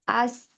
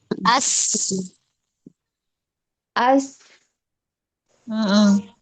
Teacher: Sin makrojnya keluar dari ujung lidah yang menempel pada gigi seri bawah. Mempunyai sifat hamas, aliran udara mengalir. Kemudian sifat rokoah, suara mengalir, tidak tertahan ketika dibaca ada udara di depan mulut. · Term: huruf sin